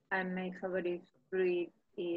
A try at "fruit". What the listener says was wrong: No, fruit no. No, my favorite fruit no. Acuérdate que la I no se pronuncia. The I is not...